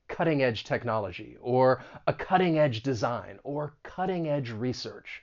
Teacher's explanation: the stress is going to be on that first syllable, and that T, I am going to pronounce this as a flap T, which is very common when talking about the American accent because that T comes between two vowel sounds.